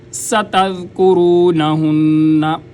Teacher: یہاں پر سین سیٹی کی آواز آئے گی، اور تذ، ذال کو نرمی سے ادا کریں گے۔